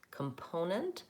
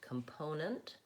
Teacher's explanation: Component, what I would focus on is having a stressed syllable in the middle. So the other two syllables are short